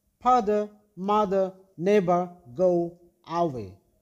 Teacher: It arises from A, O, and E letters. Tongue position mid-central, lips shape unrounded. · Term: schwa sound